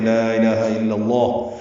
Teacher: اللہ لا الہ میں لام لمبا کرتے ہیں، یہ مد منفصل ہے، الف مدہ کے بعد حمزہ آنے کی وجہ سے، جیسے کلمے میں پڑھتے ہیں لا الہ الا اللہ، تو یہاں پہ لام کو لمبا کرنا ہے، 4 حرکات ہم لمبا کرتے ہیں۔